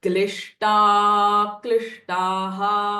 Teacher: instead of saying a klishtaha, that klishta you will elongate for a little further. · this S with a dot underneath is a retroflex sh sound. So it should not sound as a sh.